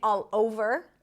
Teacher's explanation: So, I could say all over and then kind of like stop my breath in between, but all over makes it smoother. Makes it sound like it's one word